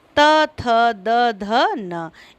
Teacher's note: फिर दांतों से त, थ, द, ध, न इन वर्णों का उच्चारण होता है